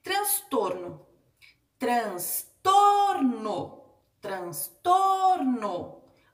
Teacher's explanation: penúltima sílaba dela é mais forte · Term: paroxítona